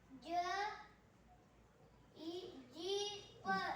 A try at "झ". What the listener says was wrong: ज नाही बाळा झ झ झपल्याचा झ झ